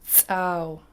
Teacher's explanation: It's a pinched S followed by a high tone double A and then round your lips at the end.